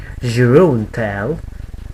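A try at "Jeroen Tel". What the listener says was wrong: you're sort of pronouncing it in a French way. No, it's Jeroen. It's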